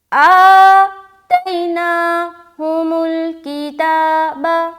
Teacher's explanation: آ میں کھینچا، تئی میں ہم نے جلدی کیا